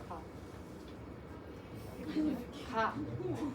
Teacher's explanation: 그는 파열음이거든? 이 기관을 완전히 막았다가 공기를 터뜨리면서 나는 소리야. 자, 혓뿌리가 여기를 막아야 됩니다.